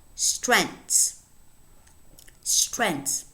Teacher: In other words, this is a 1-syllable word. It's a monosyllabic word which has a very complex onset constituted by 3 consonant sounds and a very complex coda with 1, 2, 3, 4 consonants.